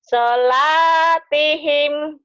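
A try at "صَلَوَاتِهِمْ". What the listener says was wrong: sholawat. Kan ada barisnya nih. Tapi di sini ada barisnya waknya. Sholawatihim. Di sini sholawatihim.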